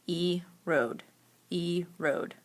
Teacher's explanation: that long o sound is in the second syllable